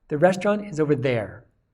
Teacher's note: This there is the here or there meaning, and so therefore this is important for the meaning of the sentence. It uses its strong form, and so these words are stressed, restaurant and there. The restaurant is over there, and there is stressed.